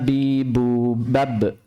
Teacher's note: Ba makhrajnya yaitu bertemunya antara kedua bibir, atas dan bawah. Ba. Seperti kita melafalkan B-nya Indonesia. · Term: huruf ba